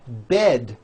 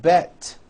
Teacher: bed has a voiced d ending it's not bet with an unvoiced T